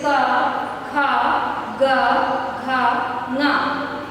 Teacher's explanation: कंठ से इनका उच्चारण होता है, गले से, सीधे गले से। जीवा कहीं किसी अंग विशेष को स्पर्श नहीं करती है।